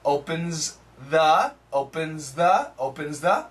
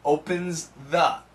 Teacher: the faster we say it, this Z sound will cancel the TH